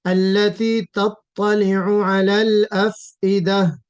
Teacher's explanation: افئدہ میں فا کے اوپر قلقلہ نہیں ہو جائے · فا میں ہمس تو ہو، ہمس ہوگا اس میں، لیکن افئدہ قلقلہ نہیں ہوگا